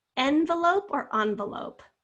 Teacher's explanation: you hear the schwa in the second syllable and the lope envelope so there it's spelled with an e